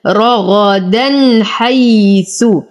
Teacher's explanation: ألف ساكنة ما قبلها مفتوح ها فهو من الطبيعي حركتين. رغدا نفخم الراء والغين لدينا تنوين وبعده الحاء في كلمتين فالحكم إظهار بدون غنة